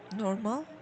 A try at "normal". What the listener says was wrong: Yes, sometimes your L becomes R. Yes, this here, yes, this part actually becomes R R sometimes. Normer.